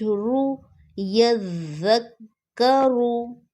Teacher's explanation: زال کو نرمی سے پڑھنا ہے، یہ زال سیٹی والی نہیں ہے، اور را کو موٹا پڑھیں گے کیونکہ اس کے اوپر پیش ہے